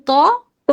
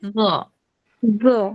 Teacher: দাঁতের সামনে দুই দাঁতের গোড়ায় হলো ত আর আগায় হলো জ